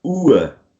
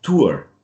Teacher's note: In British English, at least, you're not going to pronounce the R. So you're going to, let's say, replace it with a schwa, with this very relaxed sound.